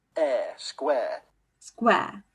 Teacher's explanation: in modern world it's much more common to use the contemporary monophone air like square